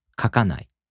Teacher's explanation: So, the accent falls on the second か. · In the downstep-type verbs, the accent falls on the mora before な. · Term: accented mora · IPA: [kakaꜜnai]